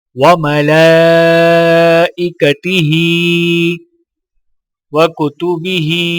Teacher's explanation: ہا کے نیچے کھڑی زیر ہے تو ایک الف کے برابر کھینچ کر پڑھا جائے گا